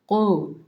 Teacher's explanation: قلقلہ والا حروف قاف نمایاں پڑھا جائے گا. نقطوں والا کاف یہ نہیں، دوسرا باریک کاف نہیں ہے، یہ نقطوں والا قاف ہے، اس کو موٹا پڑھیں.